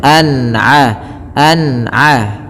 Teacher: ketika ada nun mati kita lihat bertemu dengan huruf Ain maka dibaca dengan jelas suara nunnya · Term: izhar halqi